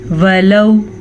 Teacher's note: وَلَوْ واو ساکن سے پہلے زبر ہے تو یہ واو لین ہے, ہم اسے نرمی سے پڑھیں گے, بغیر کھینچے پڑھیں گے